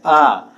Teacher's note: पीछे से आवाज आ रही है, एकदम जीभ के पिछले हिस्से से इसमें आवाज आ रही है, तो यह हमारा पश्च स्वर के अंतर्गत आएगा।